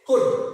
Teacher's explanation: Because here L is silent. Silent letter. We could not pronounce the sound of the la.